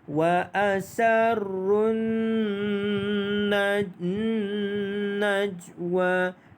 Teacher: Nun yang ada tanda syaddah wajibul ghunnah dibaca dengan ghunnah dengan 2 harakat.